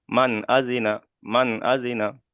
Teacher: নুন সাকিনের আওয়াজকে বিনা গুণনায় জাহির করে তাড়াতাড়ি পড়তে হবে